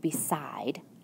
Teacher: When I say the word beside, I hear the long I in the second syllable. I see that the vowel pattern is I, consonant E.